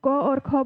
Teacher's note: Vibration नहीं है। इन ध्वनि के उच्चारण में स्वर यंत्रों में कंपन नहीं होता है। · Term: अघोष